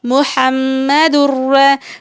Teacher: تنوین کے بعد حرف را ہے یعنی آپ کو غنہ نہیں کرنا ہے، ناک میں آواز کو نہیں لے کر جانا ہے